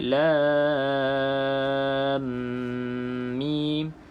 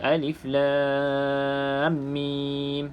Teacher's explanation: Dua harakatlah kita masukkan idgham masukkan ke dalam huruf mim berikutnya dengan dengung dua harakat jadi bila kita sebut lam ini masukkan ke dalam mim dengan